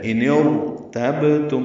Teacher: اب را پر ہوگی، با ساکن پہ قلقلہ، میم ساکن پہ اظہار